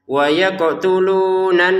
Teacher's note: Wa yaqtulunan. Nah, ini nun bertasydidnya langsung didengungkan